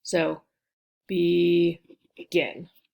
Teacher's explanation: we know the stress is on the G-I-N, second syllable, and this is a consonant, vowel, consonant, last syllable.